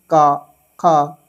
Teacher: तो जब हम इनका उच्चारण करते हैं दोस्तों तो ये हमारे कंठ से उच्चारित होता है।